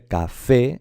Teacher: si se dice café es porque lleva la fuerza, la sílaba tónica está en la última. Entonces es aguda.